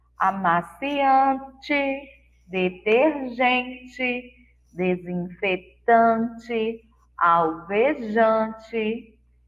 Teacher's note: Todas foram escritas com um som de I fraco nas últimas sílabas. Som de I fraco, letra E.